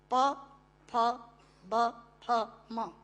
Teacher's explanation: प फ ब फ म दोनों होंठ मिलाकर बोले जा सकते हैं। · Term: ओष्ठांग